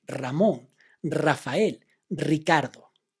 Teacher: The R is at the beginning of a word, and then you must do the sound of the rolling R.